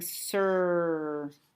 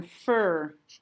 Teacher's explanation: be saying has taken over the vowel so we're saying sir r has taken over that vowel sound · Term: r controlled